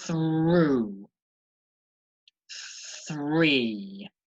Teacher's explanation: so you have the th the hard th sound with so that involves my tongue coming through my teeth then I need to make an R sound afterwards and then